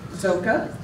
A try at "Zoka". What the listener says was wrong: Zoka. Don't pronounce it Z.